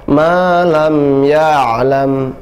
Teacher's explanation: Suara ain ada suara tawassut atau bainiyah, tidak dia syiddah, tidak dia rakhawah, tidak tertahan suaranya, tidak juga mengalir, tapi pertengahan, ya. Tidak boleh malam ya'lam, tertahan, ya. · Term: ain yang sukun